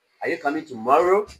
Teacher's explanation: You are raising your voice to ask a yes or no question. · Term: rising tone